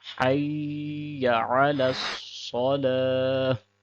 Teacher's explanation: سواد کو موٹا پڑھیں گے، اگر سواد کو موٹا نہیں کریں گے تو سین کی آواز نکلے گی